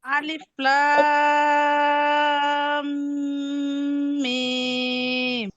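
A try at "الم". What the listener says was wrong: এখন ঠিক আছে, এখন সুন্দর হয়েছে, কিন্তু মিমের মধ্যে টান বরাবর হয় নাই, টান কম হয়েছে।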